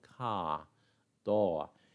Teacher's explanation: RP is a non-rhotic language, which means that we don't usually pronounce the R sound. In standard British English, an R at the end of the word just lengthens the vowel.